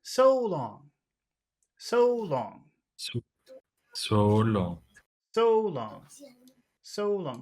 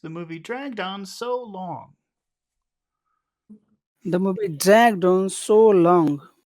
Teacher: the final two words in that phrase was high voice okay we'll start high but we'll finish low because most phrases end low so we'll have to we'll have to change this to low